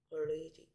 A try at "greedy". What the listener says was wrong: 왜 혀가 밖으로 나옵니까? Greedy가 아니고 greedy. Greedy가 아니고 greedy, greedy, greedy. Greedy.